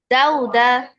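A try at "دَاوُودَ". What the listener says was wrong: না, এটা দেখো, দালের উপরে আছে ফাথা, তারপরে খালি আলিফ। তো এখানে একটা মাদ হবে, মানে টেনে পড়তে হবে। দে, এরপরে ওয়াও, এরপরে উল্টা দম্মা।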